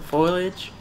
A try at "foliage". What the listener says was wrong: You mean foliage? Foliage. Foliage, foliage. One is basically foil. Foil. Foliage is, and it's supposed to be foliage. You put the eye in a different place. Foliage. It's supposed to be foliage.